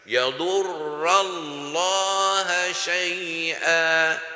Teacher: le mot Allah prononcé plein à la bouche